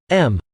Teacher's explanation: If you add a closed curve to Parma, thus turning it into Yumbar, you are adding prior to the already present bilabial stop, the most natural nasal component, which is bilabial nasal